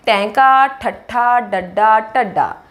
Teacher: अगे है जी टैंका ठट्ठा डड्डा ढड्डा, इन्हां दे उचारण दे समय साडी जीभ मुड़दी है, पिछले पासे साडी जीभ की नोक जाती है, हवा नूं रोकदी है फिर छड्ड दिंदी है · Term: उल्ट जीभी